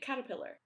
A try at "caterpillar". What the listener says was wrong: Yeah, but you're saying Cala. No, but there's a T. You don't say waller for water, do you? You pronounce the T. No, you don't say, oh, I want some waller.